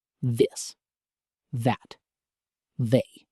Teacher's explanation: the voiced version, where your vocal cords vibrate, like in the word this